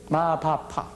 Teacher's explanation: 입술이 열렸다 닫혔다 할 때 나오는 소리죠. 이것이 바로 입술 소리입니다.